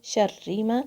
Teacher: र पे शदा भी है र शदा फिल होना चाहिए थोड़ी सी तकरार आएगी इसमें · را پہ شدہ بھی ہے، را کے شدہ فیل ہونا چاہیے، تھوڑی سی تکرار آئے گی اس میں، شر ما. اور را کے نیچے کسرہ بھی ہے.